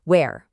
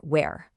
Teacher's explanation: In a lot of the UK, you might hear this little breathy H sound at the start, where. But in the US, it's often a cleaner where.